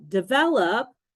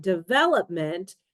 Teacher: develop stresses the second syllable but development stresses the third one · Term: word stress